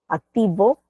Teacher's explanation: los dos labios y algunas personas para decir la v activo juntan el labio inferior con los dientes superiores